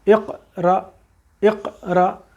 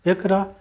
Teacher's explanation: ایک دم اس کو قوت کے ساتھ قاف کے مخرج میں رکیں گے تاکہ وہ قلقلہ ہوگا، اور اگر ہم نے پڑھ دیا اقرا تو پھر ہم نے قلقلہ نہیں کیا، وہ ہماری غلطی شمار ہو جائے گی۔